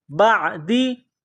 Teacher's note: کاف میم پیش کم، میم میم زیر میم، قلوبکم من بعد، با کو عین کے ساتھ پلس کرنا ہے، عین گلے کے درمیان سے زور لگا کر عین کو نکالنا ہے